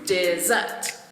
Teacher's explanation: dessert is a two-syllable word with the stress on the second syllable